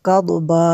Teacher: ضاد کو پر کرنا ہے، قاف کو بھی پر کرنا ہے